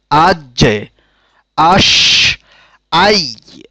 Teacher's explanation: ৭ number মাখরাজ জিহ্বার মধ্যভাগ এবং সোজা উপরের তালু, অর্থাৎ জিহ্বার ঠিক মাঝখান এবং উপরের তালুর সাথে মিশিয়ে ৩টি হরফ উচ্চারিত হয়। এই ৩টি হরফ হচ্ছে জিম, শিন, ইয়া।